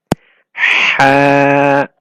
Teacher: Ha comes from mid of the throat.